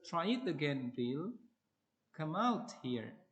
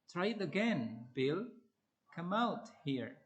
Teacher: A comment can be turned into a request by using a low rising intonation.